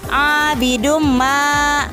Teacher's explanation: yaitu karena dhommatain bertemu dengan huruf idgham yaitu huruf mim maka tanwin tersebut dimasukkan ke dalam huruf mim disertai dengan dengung maka dibacanya menjadi abidumma contoh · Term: Idgham Bighunnah